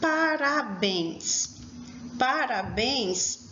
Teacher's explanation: é uma oxítona ela possui a última sílaba forte